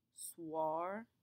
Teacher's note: the oi combination in French will always make a w sound B here how it kind of sounds like a w swar